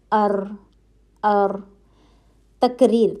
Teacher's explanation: تقریر کا مطلب ہے دوہرا ہوا. حرف ادا کرتے ہوئے ایک طرح کی کپ کپی پائی جاتی ہے